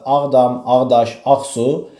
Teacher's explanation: mürəkkəb sözdə ilk sözün üzərinə vurğu düşür